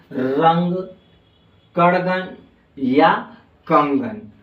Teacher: अंग का जो उच्चारण होता है ना वो किससे होता है नाक से होता है